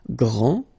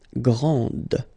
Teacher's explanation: This final D is not pronounced. Okay, so grand, and then the feminine form, grande.